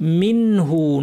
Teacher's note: নুন সাকিন পর হা হচ্ছে হালকের হরফ, এই জন্য নুনটাকে ইজহার করে স্পষ্ট করে পড়তে হবে।